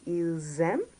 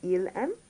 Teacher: there's the S followed by an A, which creates a liaison between the two. So they're pronounced together